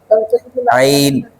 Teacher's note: عین حلق کے درمیانی حصے سے